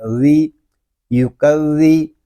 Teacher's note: زال حروف لسانیہ میں سے ہے، اس کو نرمی کے ساتھ ادا کریں گے، اس میں سیٹی کی آواز نہیں آنی چاہیے